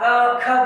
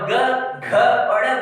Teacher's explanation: आप क ख बोलेंगे तो गूंज कम होगा, और ग घ और ड़ बोलेंगे तो आपकी गूंज दूर तक जाएगी।